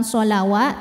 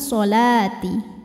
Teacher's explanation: Ini wawunya ini tidak perlu dibaca ya, jadi lamnya 2 harokat. Jadi bukan sholawa tapi sholati.